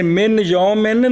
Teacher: تو نون کو یا کر کے ادغام کیا اب صرف خیشوم میں آواز آئے گی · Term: نون خفی